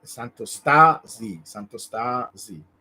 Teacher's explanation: in Italian we like to put the accent in the semi last syllable